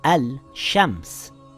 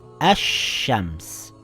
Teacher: It appears to read al-shams. We silent the lam and add a shadda on the sheen, the sun letter. Now it reads ash-shams and not al-shams.